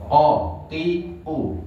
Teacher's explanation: Pangkal lidah kita angkat, istiklah. Sehingga terdengar nopo? Tebal. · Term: qaf